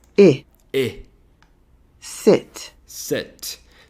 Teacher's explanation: É um som de E. É praticamente o mesmo som da letra E na língua portuguesa e é um som bem curto